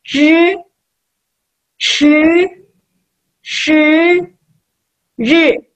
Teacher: lidahnya aja yang naik, tapi tetap giginya tutup